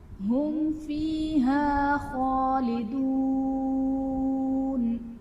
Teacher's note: ہم فیہا میں میم ساکن کے بعد حرف با اور میم کے علاوہ فا ہے، تو یہاں پر اظہار شفوی کا قاعدہ ہوگا، یعنی میم ساکن میں ہم غنہ نہیں کریں گے۔ خالدون میں خا حرف مصالیہ ہے پر پڑھا جائے گا، واو ساکن سے پہلے پیش، واو مدہ کا قاعدہ، اور حرف مدہ کے بعد عارضی سکون یعنی وقت کی وجہ سے ہم نون کو ساکن کریں گے تو یہاں پر مد عارض کا قاعدہ ہوگا۔